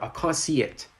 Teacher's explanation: you can hear the smooth transitioning from see to it using the y sound